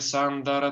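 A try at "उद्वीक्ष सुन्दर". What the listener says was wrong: not Sandara. It's not Sandara. It's Sundara.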